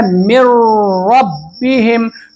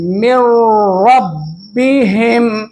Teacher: کیونکہ تام اور مکمل ادغام اس لیے ہو رہا ہے کہ نون کی کوئی بھی صفت را میں ملانے کے بعد ادا نہیں ہو رہی ہے، نون کی ادنا سی بھی بو نہیں سنائی دے رہی ہے۔ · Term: ادغام تام